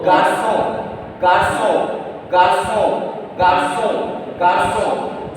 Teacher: O N will make nasal vowel sound on